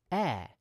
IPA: ɛː